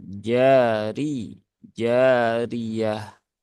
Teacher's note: Alif bertemu dengan fathah, maka jimnya dibaca dengan kadar 2 harokat.